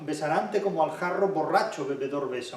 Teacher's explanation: Nótese también esta acumulación de bilabiales oclusivas sonoras.